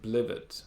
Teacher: The stress is on the first syllable, even though it's a nonsense word. Most 2-syllable words have stress in the first syllable, and so that's why automatically I'm saying this is blivet.